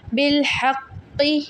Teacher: قاف مشدد اور قلقلہ کا بھی ہے، اس کو ہم دباؤ دیں گے